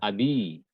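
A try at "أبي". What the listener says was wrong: sahih.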